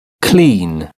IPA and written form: kliːn (clean)